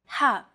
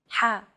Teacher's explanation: This sound is pronounced very deep in the throat. You want to make an H sound, but with the throat constricted a little. Ha. One trick to produce this sound is to push your tongue as far back in your mouth as you can and then say the word hot. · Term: The letter ha